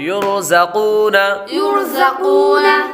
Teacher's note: را ساکن سے پہلے حرف پر پیش ہو تو را کو پر پڑھیں گے۔ آگے قاف حروف مستعلیہ میں سے ہے، اس لیے اس کو پر پڑھیں گے۔